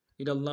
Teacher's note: لام کو لفظ اللہ کے لام کے سامنے لانا، تشدید زور دیں گے، لام کے اوپر کھڑا زبر ہے، ایک دال میں کھینچیں گے۔